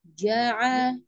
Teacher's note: tidak sampai melewati rongga hidung, lurus keluar di rongga mulut. Dari rongga tenggorokan bagian tengah lepas. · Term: huruf ain